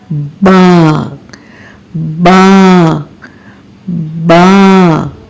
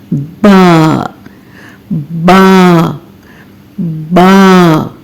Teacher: अब आपने बा की अदायगी करने के लिए इन होंठों को जुदा करना है और आवाज को मुंह से बाहर निकालना है बारीक आवाज में